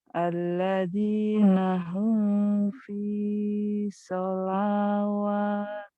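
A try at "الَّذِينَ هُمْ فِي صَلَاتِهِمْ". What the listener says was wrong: Sholatihim, wawunya nggak dibaca.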